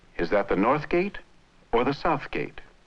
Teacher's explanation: Notice that the speaker of English contrasts the word north and the word south. The French speaker does not.